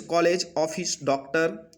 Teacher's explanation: अब आ का प्रयोग अंग्रेजी में आए हुए कुछ शब्दों में होता है, जैसे कॉलेज, ऑफिस, डॉक्टर। इन ध्वनि आ और ओ के बीच ध्वनि है